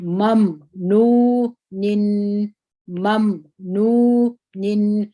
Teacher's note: دلته د میم کې د جهر صفت دی هوا د خولې څخه نه راوځي